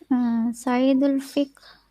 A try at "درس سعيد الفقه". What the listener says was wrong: No, سعيد is still heavy. سعيد. درس سعيد. الفقه.